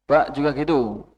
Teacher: ba tidak terlalu banyak ee udara yang keluar